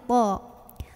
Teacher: ujung lidahnya tempel ke tempat tumbuh gigi seri yang atas ya. Gigi seri itu yang tengah, yang belakangnya ada tempat tumbuh gigi, tempel ke sana.